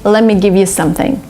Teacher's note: they just omit the letter t and you get lemmy